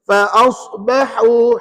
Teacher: ha pedas tu di tengah kerongkong